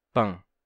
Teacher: Ele não se sustenta em português, assim, pan, pan, como um N de fato no final. E ele deixa simplesmente a vogal precedente nasal e a gente teria a pronúncia pan.